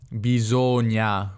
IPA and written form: bisoŋa (bisogna)